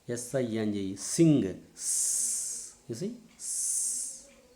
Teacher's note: The front part of the tongue is raised towards the alveolar ridge, then we will produce a alveolar fricative